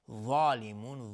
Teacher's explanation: است، و هم ظالمون، میم ساکن باشه وا اظهار شفوی، ظالمون، ظال از حروف استعلاء غلیظ تلفظ میشه و الف هم تابع ظا غلیظ تلفظ